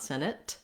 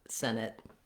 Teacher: clear vowel on the first syllable Senate you'll also notice that if I say Senate by itself I don't release that T I use what's called a stopped te so not Senate but Senate no air released there the te